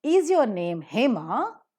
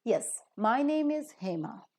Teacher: you rise up a little bit to sound it as a question. And when you fall down, it sounds like an answer. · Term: rising tone